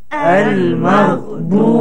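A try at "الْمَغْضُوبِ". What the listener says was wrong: Tebal huruf ghain sikit. Al-maghdubi. Lihat bagaimana kita tekan huruf ini, suara tekan kepada hujung halqum yang dekat-dekat anak tekak ni.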